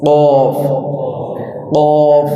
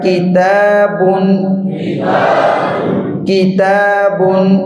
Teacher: نرم حصے سے قوف ادا ہوتا تھا اور سخت حصے سے کاف ادا ہوتا ہے، اور اس کے اندر جو صفت پائی جاتی ہے وہ شدت کی ہے، سختی والی جو ہے نا وہ صفت پائی جاتی ہے، اور دوسری ہے استفال، یہ کہتے ہیں بریک، یعنی یہ بریک پڑا قوف اس کے اندر استعلا کی صفت تھی اور وہ موٹا پڑا جاتا تھا۔ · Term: کاف کا مخرج